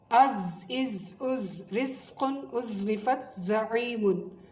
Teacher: زا کی آواز میں شدت بھی ہوتی ہے، تھوڑی سختی بھی ہوتی ہے اور سیٹی بھی ہوتی ہے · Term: حروف صفیریہ